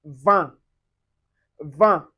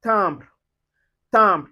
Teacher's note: Instead of keeping all the air in your mouth, we're going to let some of it out through your nose. Welcome to the world of a nasal vowel. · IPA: /ɛ̃/